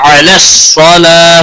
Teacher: صاد حروف مستعلیہ میں سے ہے، موٹا پڑھا جائے گا